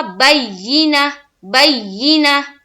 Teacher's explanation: گول تا پر وقف کریں گے تو کیا ہو جائے گا، وہ ہا ساکینہ بن جائے گی. تو یہاں دیکھیں گول تا ہے تو یہ ہا بن جائے گی اور ساکن، یعنی کہ اس کے اوپر جزم آ جائے گا.